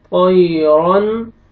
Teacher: रा को मोटा करके पढ़ेंगे